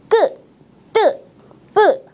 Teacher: 경음이라는 소리는 끄 뜨 뿌와 같이 힘을 많이 주어서 발음하는 된 소리를 이야기합니다